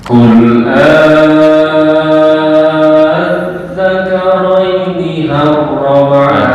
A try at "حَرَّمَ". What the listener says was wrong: Bukan har ya. Ha. Ha. Ha. Makhraj ha. Harrama, bukan harrama.